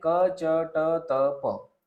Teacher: आपण वर्ण उच्चारण करतो तेव्हा प्राणवायूचा अल्प उपयोग होतो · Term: अल्पप्राण